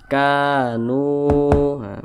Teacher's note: huruf Kaf berbaris ke atas huruf kafnya maka dia dibaca panjang Mad Thobi'i panjangnya dua harakat atau kira-kira dua ketukan kan nu nu juga dibaca p panjang perhatikan rumus Mad thbii'i